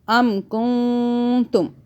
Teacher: ام کنتم، نون اخفاء کا قاعدہ، نون کو چھپانا ہے، زبان تالو سے ٹچ نہیں کرنی، 2 سیکنڈ کے لیے چھپانا ہے